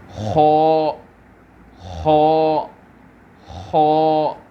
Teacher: حلق کا جو سب سے اوپر کا حصہ ہوتا ہے وہاں پر سے یہ خو لیٹر پروناؤنس ہوتا ہے. خو جس طرح سے ہم اردو میں کہتے ہیں خراب خراب خراب بولتے ہیں, اسی وہیں سے یہ لیٹر پروناؤنس ہوتا ہے خو.